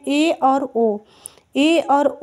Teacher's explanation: ए और ओ बोलने के लिए आधा मुंह को खोलना पड़ता है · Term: अर्ध समृत, अर्धसमृत